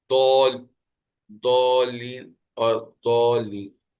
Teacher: زبان کے کنارے کو، چاہے وہ کنارہ سیدھے ہاتھ والا ہو چاہے وہ کنارہ الٹے ہاتھ والا ہو، اس کو آپ نے اسی سائڈ پہ جس کنارے کو استعمال کر رہے ہیں اسی سائڈ والے داڑوں سے لگاتے ہیں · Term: ضاد